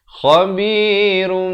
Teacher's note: Asalnya ra ni baris dua di depan, run, khabirun. Tapi datang ba kena tukarkan daripada bunyi nun kepada bunyi mim. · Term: hukum iqlab